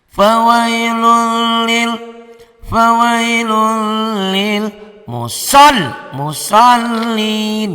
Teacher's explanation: Fawailun lun jadi lul. Tanwinnya dibaca satu. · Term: idgham bila gunnah